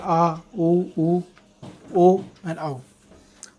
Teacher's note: जीभ के पीछे वाले हिस्से का प्रयोग होता है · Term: पश्च स्वर